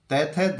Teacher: दंत ध्वनियां जीभ दांतों को स्पर्श करती है।